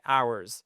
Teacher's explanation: vous vous souvenez que le H ne se prononce pas